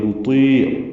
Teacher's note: ولا نطیع لا الف مدہ نطیع، طا پر پڑھیں گے نطیع، یا مدہ عین وسط حلق سے ادا کریں گے